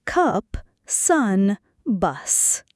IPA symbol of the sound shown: ʌ